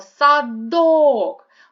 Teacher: вимовляємо слово садок голосніше вимовляється другий склад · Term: наголос